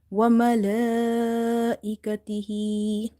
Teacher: Ha is having vertical kasra, so there will be 1 up to 1 alif stretch.